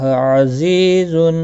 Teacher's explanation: زی یا مدہ ہے، ایک الف کے برابر کھینچ کر پڑھیں گے